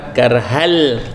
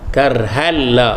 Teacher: kita masukkan ke dalam lam. Karhal lah, seolah-olah tidak ada nun di situ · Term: idgham